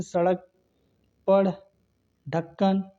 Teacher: जिसके उच्चारण में जीभ उलट कर तुरंत पीछे गिरती है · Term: उच्छिप्त व्यंजन